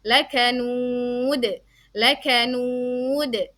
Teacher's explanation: Qalqalah sughra dengan pantulan, kalau ini qalqalah kubra itu dengan pantulan yang lebih kuat ya